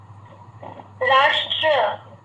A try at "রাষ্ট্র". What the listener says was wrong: হ্যাঁ এখানে র আকার হবে না, এটা র র হবে, এটা আমার হচ্ছে এটা ভুল হয়েছে আর কি। রাষ্ট্র র,